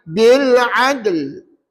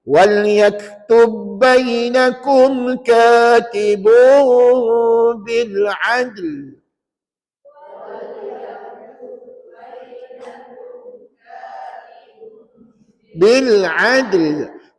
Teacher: Bukan huruf qalqalah, huruf lam. Huruf dal tu lah huruf qalqalah. Jadi huruf qalqalah tu berada di tengah. Maka tak layak jadi kubra. Dia jadi sugra aja. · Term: qalqalah sugra